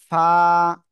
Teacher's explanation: এক আলিফ টান হবে নিচের ঠোঁটের পেট, উপরের দুই দাঁতের আগার সাথে লাগিয়ে এক আলিফ টানিয়ে উচ্চারণ করতে হবে